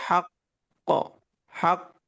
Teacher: তাসদিদের কলকলাটা আয়াতের শেষে একটু ধরে উচ্চারণ করতে হয়। একটু ধরে রেখে উচ্চারণ করতে হয়।